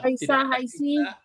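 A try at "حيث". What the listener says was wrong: tidak ada haisi, tetap dia haitsu. Ya, min haitsu dimanapun nanti bertemu tetap haitsu dia. Jadi masuk pun huruf jar min haitsu juga. Jadi huwa wa qabiluhu min haitsu.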